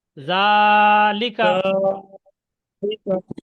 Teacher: কারণ জালটা টান দিতে হবে, খাড়া জবর